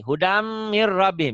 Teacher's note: Hudam ditahan, mir nggak ditahan.